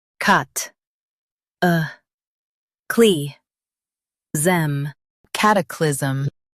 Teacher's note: Emphasize cat and soften clyz.